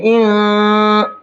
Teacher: इन के नून में इख्फा करेंगे, क्योंकि नून साकिन के बाद में काफ है, और काफ इख्फा के 15 हरफों में से एक हरफ है, तो नून के अंदर इख्फा करेंगे। इन, नाक में थोड़ी देर आवाज़ को निकाल करके पढ़ेंगे, रोकना नहीं, निकालना है, आवाज़ निकलती रहेगी।